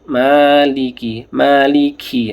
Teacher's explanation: kafnya ada hamsnya ya. Ada nafasnya yang keluar.